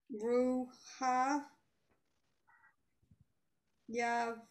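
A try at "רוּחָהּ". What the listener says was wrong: ruha ha. There's both forms of the ha there. Ruha ha.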